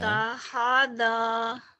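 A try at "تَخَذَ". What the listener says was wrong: Takhodo, bukan tahodo, ini mah dal ya.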